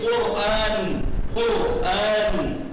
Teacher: رے ساکن ہے اس سے پہلے کاف ہے اس پہ ضمہ ہے تو کیا کہیں را منہ بھریے اور موٹا پڑھیے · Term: تفخیم